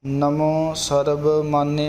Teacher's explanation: ਬੱਬੇ ਦੀ ਆਵਾਜ਼ ਆਵੇ ਪੋਲੇ ਜੇ ਬੁੱਲ੍ਹਾਂ ਨਾਲ